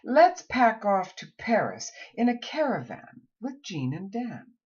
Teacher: it needs to be uttered in a crisp and clear fashion it is short it is a low front vowel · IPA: æ